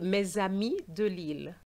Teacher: you're going to have an s between two vowels and it's going to give you a z sound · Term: liaison